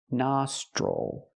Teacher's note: the i l does not make the ill sound because it's not stressed it makes the o sound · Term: ol sound